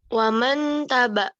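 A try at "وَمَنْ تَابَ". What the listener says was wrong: Taknya panjang. Bukan waman bacanya. Wamang tabah.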